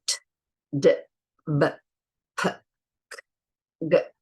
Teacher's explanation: P, B made with the lips, T and D made behind the teeth, and G made at the back of the mouth. So those sounds will they'll always stop the sound. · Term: stops